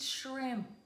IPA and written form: ʃrɪmp (SHRIMP)